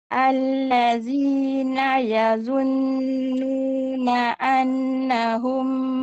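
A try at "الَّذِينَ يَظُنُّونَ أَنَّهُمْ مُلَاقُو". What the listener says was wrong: Gunnah bagi cukup Banyak-banyak tinggal gunnah tu. Nun syaddah ada banyak.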